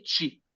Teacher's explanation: Los japoneses como que no les sale bien pronunciar la ti. Ellos pronuncian chi. Es el bloque de las tes, pero se dice chi.